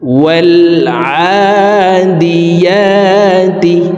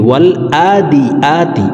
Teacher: আইনের উচ্চারণ হলকের মধ্যখান থেকে পড়তে হবে, ইয়ার উচ্চারণ জিহ্বার মধ্যখান থেকে পড়তে হবে